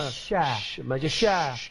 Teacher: Tafashi ni suara yang berhemburan angin apabila menyebutnya.